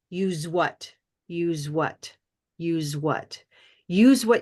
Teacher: we're going to recognize that this letter s is making a z sound